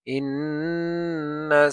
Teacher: নুনের উপরে তাসদিদ ওয়াজিব গুন্না